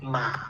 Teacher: The third tone is ma. Yeah, first down and then up. There is a transition. Yeah, first down, then up.